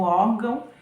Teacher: ele é um sinal que indica que a palavra é nasal que quando a gente pronuncia essa palavra o ar sai pela boca e pelo nariz